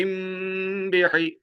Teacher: ہم میم ساکن ہے، آگے با آیا ہے تو غنہ ہو رہا ہے